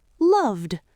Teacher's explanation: Notice how we're stretching the vowel in those words just like we practiced in episode 7 because they end in a voiced D.